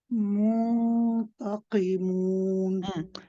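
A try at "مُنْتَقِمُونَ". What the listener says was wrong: You want to keep the ta light as well, Papaji. So not ta, ta. Muntaqimun. Munta. So what you want to do, Papaji, is when you circle the lips for the dhamma, when you say mu, when you start the ikhfa and you start doing the ghunna, don't keep your lips circled because then your ghunna sounds like mu.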